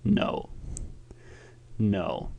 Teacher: Do you hear that kind of croaking in your throat? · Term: third tone